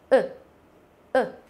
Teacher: chúng ta chỉ đọc cái khoảng thời gian nó rất là ngắn thôi và nó chỉ bật một cái ở trong cái phần họng của mình thôi